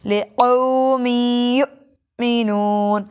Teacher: حمزہ ساکن جھٹکا دیں گے اور غنہ بھی ہوگا